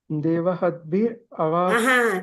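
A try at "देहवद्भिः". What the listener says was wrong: Not Deva. Deha Vadbir.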